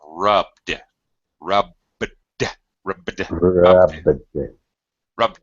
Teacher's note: Again, with the verb, with the voiced consonant ending, b is a voiced sound. So again, Do not pronounce an extra syllable.